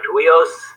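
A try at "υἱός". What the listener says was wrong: get it more of a H in there, like Huios. A little scope, put a little scope in there, Listerine or something. Huios.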